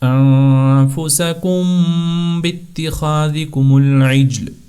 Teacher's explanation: آپ نے ناک میں آواز لے جائیں گے اور دونوں ہونٹوں کو ملائیں گے، اسی وجہ سے کہتے ہیں اس کو اخفاء شفوی، یعنی اپنے ہونٹوں کے ساتھ اس کا آپ نے تلفظ کرنا ہے۔ · یہ اخفاء شفوی اس وقت جاری ہوتا ہے کہ جب میم ساکن کے بعد حرف با ہوگا، ٹھیک ہے، صرف حرف با ہوگا جب میم ساکن کے بعد، تو اس وقت ایسا کیا جائے گا کہ میم کے اوپر اخفاء کیا جائے گا، یعنی میم کی آواز کو ناک میں چھپا کر تھوڑا لمبا ادا کیا جائے گا